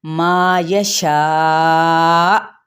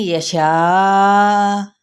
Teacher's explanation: حمزہ ساکن ہو جائے گا تو ہلکا سا جھٹکا دینا ہے